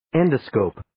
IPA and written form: 'endə,skoʊp (Endoscope)